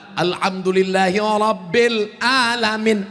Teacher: Ra, tafkhim, hurufnya tebal.